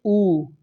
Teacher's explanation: उच्चारण में होठ गोलाकार या वृत्तमुखी होते हैं, जैसे ऊ। आप जब ऊ बोलेंगे, चाहे छोटा ऊ बोलें चाहे बड़ा ऊ बोलें, तब भी क्या होगा, आपका जो मुख होगा, आपका जो मुंह होगा वो कैसा हो जाएगा, वृत्तमुखी यानी गोल मुंह बन जाएगा।